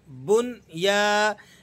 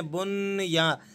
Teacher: لفظ ہے بنیان مرصوص، با نون پیش بن، یا الف زبر یا، بن یا، یہاں پر نون ساکن ہے لیکن ہم یہاں غنہ ادا نہیں کریں گے، بغیر غنے کے آپ میں اس کو پڑھنا ہے۔